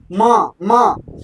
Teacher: कहते ही देखिए नाक से आवाज आ रही है आपको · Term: अनुनासिक